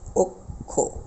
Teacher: বিষয়টা আমরা দেখি, যেমন উদাহরণ, যেমন এখানে রয়েছে অক্ষ, স্বরীয় রয়েছে শব্দের শুরুতে, তারপরেই যুক্ত খ বর্ণটি রয়েছে। এই জন্য এটির উচ্চারণের ক্ষেত্রে আমাদের অ এর উচ্চারণ ও এর মতো হয়ে যাবে, অর্থাৎ উচ্চারণ করতে গেলে বলতে হবে আমাদের অক্ষ।